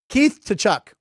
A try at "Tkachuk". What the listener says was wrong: The T is, don't pronounce the T.